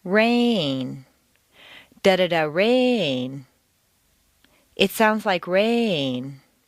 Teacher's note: Make rain very musical and put it on 2 notes. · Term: new information